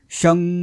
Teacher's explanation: शंकरमधला शचा उच्चार लांबवायचा आहे. शं. हा जो ध्वनी येतो ना, तो ध्वनी म्हणजे हे अनुनासिक.